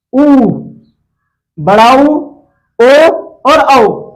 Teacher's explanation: मुंह का आकार देखो हमारा कैसे हो रहा है, एक वृत्त के जैसे गोल बन रहा है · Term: वृत्तमुखी